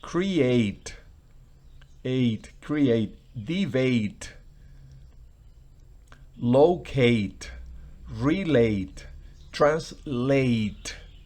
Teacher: lleva el acento en la parte final